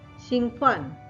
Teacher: 兴 first tone, 奋 fourth tone